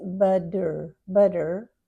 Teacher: Often when it's between two vibrating sounds, we change to D. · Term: double T